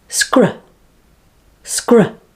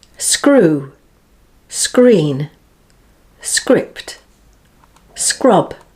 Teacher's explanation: the back of the tongue makes the closure on the roof of your mouth at the back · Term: sk